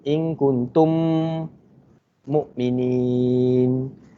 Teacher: Cara baca dia memasukkan huruf mim pertama ke dalam huruf mim yang kedua dengan dengung 2 harakat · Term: idgham mutamasil syafawi